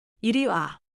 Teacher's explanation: The fall is on 와. But keep your voice relaxed.